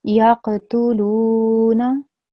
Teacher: Na should be quick, not long.